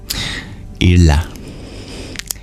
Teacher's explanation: That's an L sound pronounced not at your teeth, but when you curl your tongue back. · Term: retroflex lateral approximate